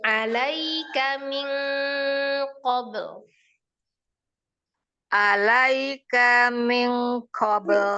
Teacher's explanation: Ikhfa'nya ditahan, K-nya pendek.